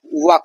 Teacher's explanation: तो व का जो उच्चारण स्थान है दोस्तों यह है ओष्ठ और दंत। यानी होठ और दांत दोनों से ध्वनि निकलती है जब आप व को बोलते हैं। अवर्गीय व्यंजन इसे कहा जाता है।